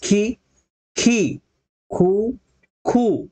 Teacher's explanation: उ हा कमी वेळ लागतो आणि दुसऱ्या खु ला जास्त वेळ लागतो